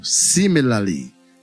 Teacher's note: The word similarly is stressed on the first syllable.